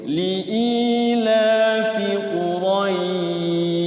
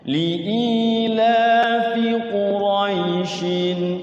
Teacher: Kalau di waqaf jadi mad layin, tapi kalau di wasol jadi izhar halqi ya.